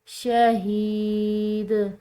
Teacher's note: دال کو ہلاتے ہوئے چھوڑنا ہے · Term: قلقلہ